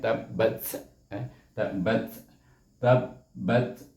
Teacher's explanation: Huruf ta itu adalah huruf hamas juga. Jadi ada berangin sikit bunyinya.